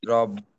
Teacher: র এর উপর জবর আছে তাহলে র মোটা